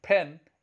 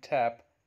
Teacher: per in pen is aspirated and per in tap is not aspirated